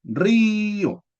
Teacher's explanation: La i y la o forman sílabas separadas. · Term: yato